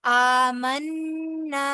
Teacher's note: नून मुशद्दद है। इस पे गुना होगा और आगे अलिफ मद्दा है। लिहाजा गुना करने के बाद जो नून की जो हरकत है वह भी दो हरफ बराबर लंबी होगी। · نون مشدد ہے اس پہ گنہ ہوگا